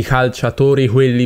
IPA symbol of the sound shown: h